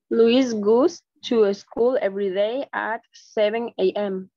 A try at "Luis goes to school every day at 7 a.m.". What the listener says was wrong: Okay, muy bien, solo un error de pronunciación. No es goose, porque goose es ganso. Imagínate cómo cambia la traducción. La correcta pronunciación es goose. Goose. Luis goes to school every day at 7 a.m.